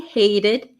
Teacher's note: And the last one, number 4, she hated her 9-to-5 job, but loved moonlighting as an actress. She hated, notice the T becomes a flap T